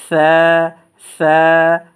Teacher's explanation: উপরে তিন নক্তা ওয়ালা এটার নাম হরফটার নাম হচ্ছে সা আর সা হরফটা এক আলিফ টান দিব এবং নরম আওয়াজে পাতলা আওয়াজে পড়বো